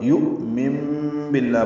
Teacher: وَمَن يُؤْمِن حمزہ ساکن جھٹکے سے ادا ہوگا اور نون ساکن کے بعد با آنے کی وجہ سے اقلاب ہوگا. یؤمن باللہ پڑھیں گے، مم پڑھیں گے، من نہیں پڑھیں گے.